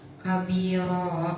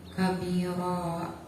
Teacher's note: Pengertiannya apabila ada mad alif didahului huruf yang berharokat fathah tain, maka cara bacanya fathah tain tersebut diganti menjadi fathah dan dibaca panjang. Panjangnya satu alif atau dua harokat. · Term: mad iwad